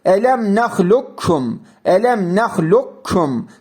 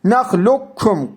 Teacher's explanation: Kaf harfi kef harfine katılır. Şeddeli k okunur. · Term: idgam-ı mütekaribeyn